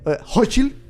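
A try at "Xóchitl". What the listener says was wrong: It's Solchi, but it's CH, not H. CH is his own thing, not H.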